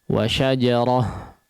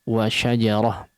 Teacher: dibaca sebagai huruf H bertanda sukun